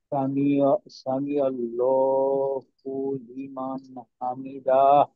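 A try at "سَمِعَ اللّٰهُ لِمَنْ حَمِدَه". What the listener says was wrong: হুম, টান দেওয়া যাবে না, ডাহ, এই দায়, হ্যাঁ হ্যাঁ দায়ে টান দেবো না, দাহ।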